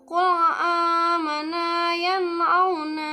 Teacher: bunyi nun mati atau tanwin jelas tanpa berdengung sedikit pun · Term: izhar